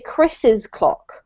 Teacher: When you have a name which ends in S, it's a little bit confusing because it's difficult to know what to do, right? We only have an apostrophe at the end, but when you're reading, you still need to pronounce the extra syllable.